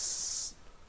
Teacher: you put your tip of the tongue here in the place of the alveolar ridge, and the air stream is released from the mouth, Yes. so it's oral sound. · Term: soft s sound